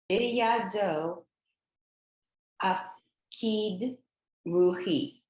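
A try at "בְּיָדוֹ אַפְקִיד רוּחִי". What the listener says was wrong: Yep,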